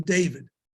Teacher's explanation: There's the pronunciation where you stop the air, that's the D. And then there's a pronunciation in which there's no air stop.